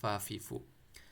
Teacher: کچھ لوگ پھا پڑھ سکتے ہیں تو وہ غلط ہے، فا پڑھیں گے۔ فا اوپر والے دان کے نیچے والے ہونٹ کے جو گیلے والے حصے ہیں اس کے اوپر آپ نے ٹچ کرنا ہے